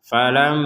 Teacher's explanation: Falamma, jangan sekedar falamma, tapi harus ada dengungan di rongga hidung kita.